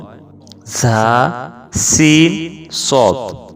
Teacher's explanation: জিহ্বার আগা সামনের নিচের দুই দাঁতের আগার দিকে লাগাইয়া উচ্চারিত হয় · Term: 12 নম্বর মাখরাজ